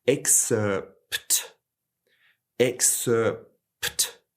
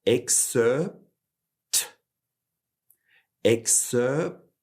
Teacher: we make the shape of a P sound with our lips, but we don't necessarily create a strong P sound · my lips are coming together after the sound, but they're not actually producing a strong P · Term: silent articulation